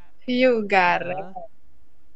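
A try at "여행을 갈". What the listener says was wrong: gal. Nah, di sini ada spasi, jangan jangan langsung disambung ya. Di sini ada spasi, ya tinggal dibaca gal.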